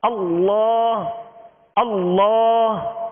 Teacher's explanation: اللہ کہتے ہوئے اس کو پر کرتے ہوئے ہونٹوں کو گول نہیں کریں گے، ہونٹوں کو جنبش نہیں دیں گے، اس لیے کہ اللہ عز و جل کے اس لام پر کھڑا زبر ہے، اور زبر کی ادائیگی کا کیا معیار ہے کہ آواز اور منہ کھول کر ادا کریں گے، ہونٹوں کو گول نہیں کریں گے.